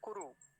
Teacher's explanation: तो कौन सी बनी हुई है, ये वाली बनी हुई है, ह्रस्व, यानी छोटा ऊ बना हुआ है। और छोटा ऊ जो होता है वो हमेशा जल्दी बोला जाता है, उसको बोलने में अधिक समय नहीं दिया जाता। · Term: ह्रस्व उकार